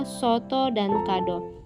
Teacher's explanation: huruf o yang bercirikan tengah belakang dan bulat